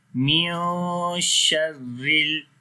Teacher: Ra we read in light sound, there is a kasra under the ra,